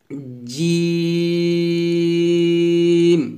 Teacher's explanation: আপনি অবশ্যই জিহ্বার মধ্যখানটা উপর তালুর সঙ্গে লাগাবেন